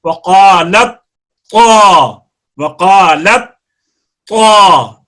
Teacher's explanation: ادغام اس لیے کرتے ہیں کہ اگر ادغام ان جگہوں پہ نہ کیا جائے، مثلا وقالت طائفہ پر ادغام نہ کیا جائے، تو آپ کو پڑھنے میں تا کے اوپر آواز کو بند کر کے طا پڑھنا پڑے گا. وقالت طا، وقالت طا، تو یہ مشکل ہو جاتا ہے.